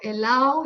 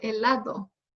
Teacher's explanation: La elisión de la D se encuentra principalmente en la última sílaba de las palabras, como las que terminan con A, D, O, ADO. Muchos madrileños no pronuncian la D.